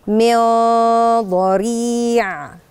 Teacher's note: ولازم النون دي شكل بقي هياخد شكل الضاد، والضاد حرف فخم، يبقى شكل غنة الإخفاء هتتشكل بالضاد.